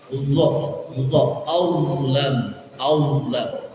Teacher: Dha itu ujung lidah kita letakkan di atas gigi atas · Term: huruf dha